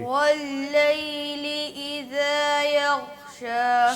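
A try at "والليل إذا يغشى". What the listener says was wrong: ہاں غین کو ہلا دیا. غین کو ہلا رہے ہیں تھوڑا تھوڑا.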